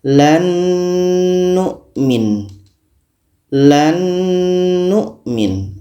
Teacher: nun mati bertemu Nun Nun ini sudah sempurna Masuknya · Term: idgam Kamil